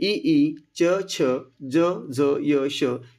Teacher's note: जिभेचा वरचा भाग जो आहे तो टाळूला स्पर्श करतो आणि त्याच्यातून हे स्वर बाहेर पडतात. म्हणून या ठिकाणी हे जे आहे ई च छ ज झ य श हे सर्व तालव्य वर्ण मानले जातात.